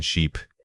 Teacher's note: The long sound forces your mouth into a wider, more sustained shape. Think of smiling slightly while stretching out the sound.